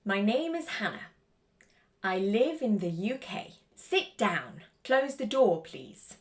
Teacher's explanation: You can see in all of those examples that the intonation falls at the end of the sentence. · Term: falling tone